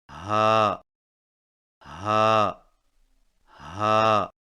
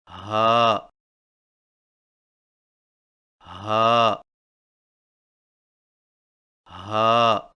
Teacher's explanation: ہا کی ادائیگی میں زبان کی جڑ کو حلق کی طرف دبائے بغیر باریک اور بغیر رگڑ کھاتی سانس میں پڑھیں، یعنی ہا ہا ہا۔